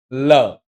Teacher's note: લ બોલતી વખતે તમારા ઉપરના દાંતનું જે ચોકટું હોય ને એની પાછળ તમારી જીભ ટચ થાય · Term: દંતીય પાર્શ્વિક